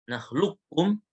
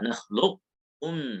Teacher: Boleh baca langsung ke kaf, nakhlukum, boleh disisakan sifat isti'la di qafnya. Bukan qalqalah ya. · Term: idgham kamil